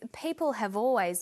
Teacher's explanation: Notice how in conversation we link the final consonant sound v with the initial vowel sound or.